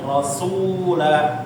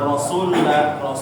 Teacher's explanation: Jangan rasulla ya. Nah, sunya dipanjangin dulu.